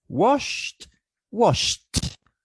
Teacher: these two letters are pronounced as sh this sound is voiceless therefore the suffix idi is pronounced as t i mean washed